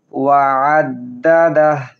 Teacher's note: আইন হলকের মধ্যখান থেকে উচ্চারণ করব।